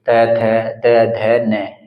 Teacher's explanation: तो इसमें भी हमारी जीभ जो है दांतों को टच करेगी त थ द ध न इन सभी में यहां पर हमारी जीवा जो है वह दांतों को टच करती है इसलिए इनको दंत व्यंजन बोला जाता है क्योंकि य दांतों की · हमारी जो जीवा का अगला हिस्सा है ना, वो हमारे दांतों को टच करेगा, और जब दांतों को टच कर कर किसी वर्ण का उच्चारण किया जाता है तो वहां पर उनको दंत्य व्यंजन कहा जाता है।